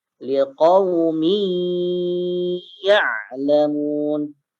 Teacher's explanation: Tanwin masuk ke huruf ya dan ditahan 2 harakat. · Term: idgham bigunnah